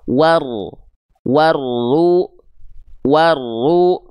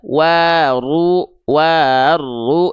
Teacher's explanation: Cara bacanya dari sebelum alif lamnya set langsung masuk ke huruf yang ada syamsiyah atau yang ada tanda dari syamsiyah atau tasdidnya di sini. Maka dibacanya jangan dipanjangkan ya wunnya tapi langsung masuk ke huruf berikutnya yang ada tanda tasdid. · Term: alif lam syamsiyah